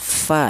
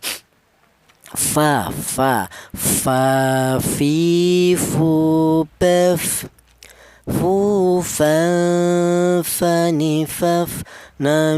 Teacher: Cuma satu bibir yang bagian bawah saja, akan tetapi ini melibatkan bibir bawah yang bagian dalam menyentuh ujung gigi seri atas, fa ya. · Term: huruf fa